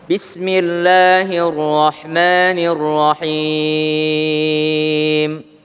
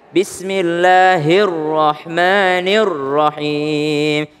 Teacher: ada huruf ro yang tebal atau namanya tafkhim ditebalkan